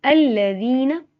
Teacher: ذال نرمی والا حروف ہے، ذال پہ سٹی کی آواز نہیں آتی